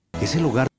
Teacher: La S y la L se fusionan con las vocales siguientes. La frase completa se pronuncia ese lugar.